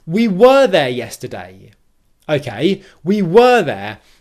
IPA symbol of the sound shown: 'wɜː